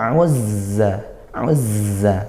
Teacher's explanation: dia makhrajnya sama seperti Sin ya yaitu ujung lidah ke gigi seri bawah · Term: huruf Za